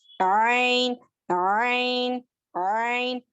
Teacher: हलक के बीच के हिस्से से आइन अदा होता है।